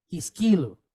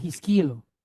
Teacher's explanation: So you're going to stress the word in the middle, not at the end.